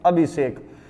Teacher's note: षटकोण वाला स का जो उच्चार स्थान होता है वो होता है मूर्धन्य